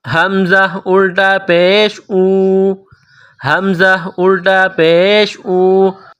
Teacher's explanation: حمزہ کے اوپر الٹا پیش ہے، ایک الف کے برابر کھینچ کر پڑھیں گے اس کو